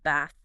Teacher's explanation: In standard southern British, it's a very open back of the mouth vowel like bath.